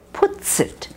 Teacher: when you have a pronoun that starts with a vowel and you have a word that ends in an S sound it's often linked